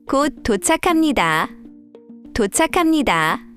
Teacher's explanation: Here, the 기역 and 히읗 come together and become 키읔. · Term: aspiration